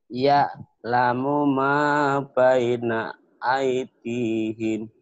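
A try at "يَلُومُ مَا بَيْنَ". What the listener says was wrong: Bagus, tapi di ainnya belum kena tuh. Dinya panjang enggak tuh? Aitihim gitu. Dinya kan mata bi lagi.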